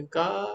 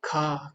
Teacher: जब हम बोलते हैं क तो उसमें ज्यादा हमारे वायु नहीं निकलती खा जब बोलोगे का खा खा में ज्यादा हवा निकल रही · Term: अल्प प्राण